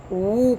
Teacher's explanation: واو کی آواز جو ہے وہ وو کر کے نکلتی ہے، یعنی کہ ہونٹ گول ہو جاتے ہیں، تو اس کا مطلب یہ ہے کہ یہ مدہ ہے۔